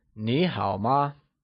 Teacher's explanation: ma is pronounced using a neutral tone, which carries a soft falling sound, as if the sound is fading away